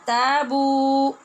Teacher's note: یہاں دیکھا آپ نے کہ الف بھی مدہ اور اس کے بعد واو بھی مدہ ہے، دونوں کو لمبا کریں گے. تابو یہ نہیں پڑھیں گے کیونکہ یہاں واو پھر ختم ہو جائے گی، تو تابو بولیے تابو.